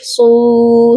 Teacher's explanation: صاد کو موٹا بھی کریں گے اور ایک الف کے برابر لمبا کریں گے کیونکہ صاد کے ساتھ واو مدہ ہے۔ اس کے بعد جب